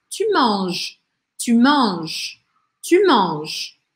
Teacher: E aí eu não pronuncio nem o e, nem o s.